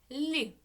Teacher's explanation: в слові люди який перший звук лі приголосний м'який